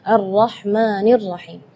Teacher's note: tidak boleh lebih madnya dari 2 harakat. Ar-Rahmanir Rahim itu tidak boleh.